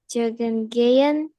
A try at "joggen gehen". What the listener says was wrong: huruf J dibaca Y ya.